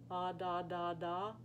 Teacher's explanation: As you can see, I can go ah, da, da, da, ah, na, na, na, ah, ta, ta, ta, really just using the tip of my tongue against the back ridge of my teeth, and I don't have to move my jaw